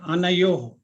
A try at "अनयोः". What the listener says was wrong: अनयोहो, यो के बाद विसर्ग है ना, तो उसको योहो ऐसे बोलिए, योह मत बोलिए।